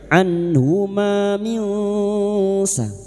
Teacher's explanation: harakat mad tabi'i, anhuma minsa, nun sukun bertemu sin ikfa hakiki, kita samarkan bunyi nun sukun dan mendengung selama 3 harakat